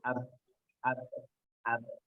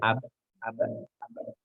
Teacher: Salah satunya sifatnya ba itu adalah dia adalah syadid atau tidak mengalir udaranya. Jadi ab, ab memantul tapi tidak mengalir.